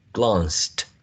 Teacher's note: All of them have a voiced d, the same as closed, closed. Now the verb glanced does not have a voiced d, but a t, a voiceless t